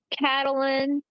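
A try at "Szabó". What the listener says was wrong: Catalin Sabo, not Zabo. Sabo, not Zabo.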